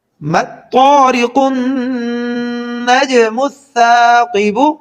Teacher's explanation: جیم کے اوپر جزم ہے تو یہاں قلقلہ کریں گے، یعنی آواز کو ذرا حرکت دے کر پڑھیں گے